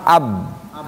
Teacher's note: Bibir bawah dengan bibir atas ini terbagi dua hurufnya. Ada yang rapat bibirnya, dirapatkan dua-duanya. Itu hurufnya ada dua nih, ba dengan ma. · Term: dua bibir